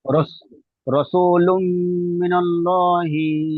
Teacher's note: ইয়া ওয়াও মিম নুনের রস মধ্যে কোনো একটি অক্ষর হইলে তানমিনের, তানমিনকে ওই মিমের সাথে মিলিয়ে একালিপ পরিমাণ গুণনা। রাসূলুম পড়েন, লুন নয়, মিম পড়েন।